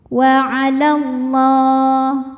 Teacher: Lam pada lafaz Allah dibunyikan secara tafkhim sebab huruf sebelumnya fathah, maka dibacanya tebal, bunyinya Allah.